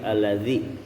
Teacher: ujung lidah nempel ke ujung gigi atas Jadi kalau terlihat dari depan seolah-olah kayak digigit